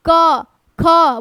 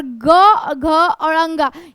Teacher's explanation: क ख बोलिएगा तो उतना कंपन नहीं होता है, पर ग, घ और अंगा ये बोलिए तो अधिक कंपन होता है